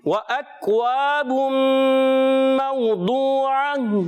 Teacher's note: واو کی ادائیگی ہونٹوں کی گولائی سے حمزہ کو واضح ادا کریں گے، کیونکہ جب کبھی حمزہ آتا ہے تو پیارے بچے اس کو ہمیشہ خوب تحقیق کے ساتھ خوب ظاہر کر کے پڑھتے ہیں.